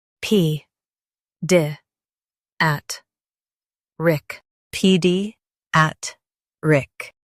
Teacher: Stress at and keep rick soft.